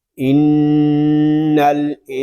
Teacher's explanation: آگے حروف اخفا میں سے سین آ رہا ہے، یہاں نون ساکن میں اخفا ہوگا۔ اخفا ہم اس وقت کریں گے جب ہم سین کو پڑھ لیں گے۔